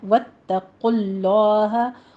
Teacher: تا کی تشدید ادا کیجئے، تا کو موٹا نہیں کرنا، باریک ہی رکھنا ہے ، واتقوا اللہ، قوف کو بھی پر پڑھنا ہے، آگے لفظ